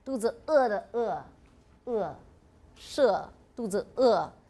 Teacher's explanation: This is like an O, but it's unrounded.